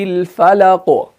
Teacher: اسی طریقے سے اگر آپ سورہ فلق کو دیکھیں گے، قل اعوذ برب الفلق، فلق جو ہے نا اس کے آخر میں قوف ہے اور قوف کے نیچے زیر ہے، تو ہم زیر کو کیا کر دیتے ہیں، سکون عارضی میں تبدیل کر دیتے ہیں، تو وہاں پر جو قلقلہ ہوگا وہ سٹرونگ ہوگا، وہ ویک نہیں ہوگا